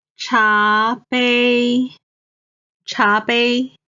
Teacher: 茶 is the second tone. 杯 is the first tone.